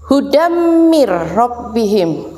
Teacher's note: Hudam ini fathah tanwin bertemu dengan huruf mim, maka harus berdengung